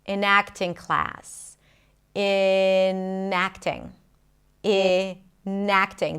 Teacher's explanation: The N becomes the beginning of the next word.